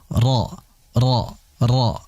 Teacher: huruf ra ini memiliki sifat takrir. Sifat yang hanya dikhususkan untuk huruf ra, yaitu getaran pada huruf ra, dan dijelaskan itu 2 getaran saja. · Makanya agak sedikit masuk. Nah, jadi ujung punggung lidah itu ya agak masuk sedikit, itu untuk huruf ra yang ditempelkan ke langit-langit atas. Ingat, hanya ditempelkan sekejap atau sebentar saja.